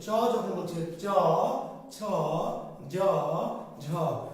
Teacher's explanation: আমাদের জিহ্বাটা গিয়ে আমাদের যে উপরে তালু আছে, কি আছে? তালু, সেখানে স্পর্শ করছে।